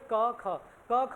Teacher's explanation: जिन वर्णों को उच्चारण में हमारे झिल्ली में जो है कंपन पैदा नहीं होता उन्हें कहते हैं अघोष वर्ण। आप देखो अगर आप बोलोगे क ख, क ख जो है गले से ही फिसल रही है आवाज, गले में कोई जोर नहीं पड़ रहा, मुंह से ही आवाज फिसल रही है।